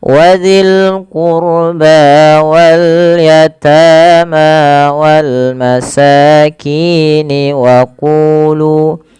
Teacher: Pada lafal ba ta ma sakinah harus sama. Kelima-limanya itu adalah mad tabi'i. Jadi kita harus panjangkan sama.